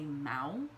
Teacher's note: if you don't nasalize it and you just say mao then you're saying the word bad so nasalization is very important it can change the meaning and